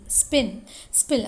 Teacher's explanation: in spin and spill it is articulated without aspiration